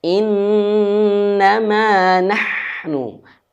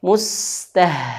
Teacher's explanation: Ha dan ha ini sama-sama mengalirkan nafas, sama-sama makhrajnya dihalqi, ditenggorokan.